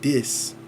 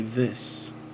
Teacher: And so also one of the things that they do is they will substitute D or F for TH sound